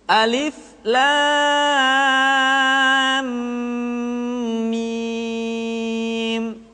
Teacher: Alif, kemudian lam dibaca panjang, la selama 6 harokat. Kemudian mim dibaca ditahan, tidak boleh tergesa-gesa, karena setelah mim mati diikuti oleh huruf mim, sehingga berlaku hukum idgham. Lam mi-nya pun dibaca 6 harokat.